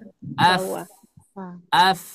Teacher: Nah, bibir bawah ya. Jadi huruf fa itu dia ujung gigi seri atas. Nah, ditemukan oleh perut bibir bawah.